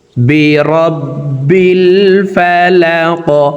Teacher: কফ কলকলার হরফ উপরের দিকে ধাবিত করে ধাক্কা দিয়ে উচ্চারণ করে কফকে সাকিন করে ফেলব